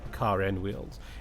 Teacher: The R is absent, but the R shows up again if there's a vowel after that. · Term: linking R